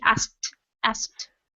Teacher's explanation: exactly right ok when it is in past tense like this we just pronounced the T we do not pronounce the K